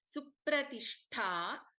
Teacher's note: Supratishtha, Shanmukha Sha, and then Mahaprana Tha.